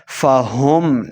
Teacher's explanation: ہاں کو ہلکے نچلے والے حصے سے ادا کرنا ہے